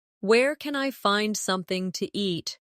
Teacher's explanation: In casual speech, something to becomes something ta.